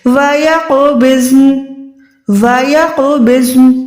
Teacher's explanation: یہاں پر آپ یقبضن نہیں پڑھ سکتے، یہاں پر زود بھی ساکن ہے، نون بھی ساکن ہے، دونوں کو آپ نے ساکن ادا کرنا ہے۔ وَيَقْبِضْنَ، وَيَقْبِضْنَ، ٹھیک ہے، زود موٹا، نون ساکن، دونوں کو آپ نے الگ الگ ادا کرنا ہے۔